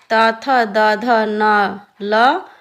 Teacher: जिन वर्णों का उच्चारण ऊपर के दांतों पर जीभ के लगने से होता है उन्हें दंत वर्ण कहते हैं